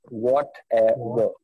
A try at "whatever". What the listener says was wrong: Ever, not ever. Yeah, because the V is there, which will tell you have to bite your lips.